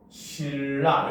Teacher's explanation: 신라라고 써도 신라 이렇게 발음되니까 종성과 초성이 똑같은 형태를 보니까 이런 건 완전 동화다라고 볼 수 있다는 거죠.